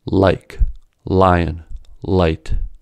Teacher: For the light L, the tongue is brought near the alveolar ridge, forcing the air around the tongue toward the sides, lateral, of the mouth before being allowed to exit. The light L occurs in a syllable initial position.